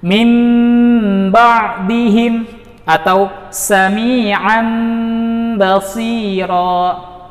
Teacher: cara bacanya adalah dengan mengeluarkan udara melalui rongga hidung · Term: iqlab